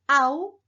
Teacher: En este diptongo encontramos que la A tiene mayor abertura y mayor energía articulatoria. Por lo tanto, esta U cumple la función de margen postnuclear, porque está después del núcleo. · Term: núcleo silábico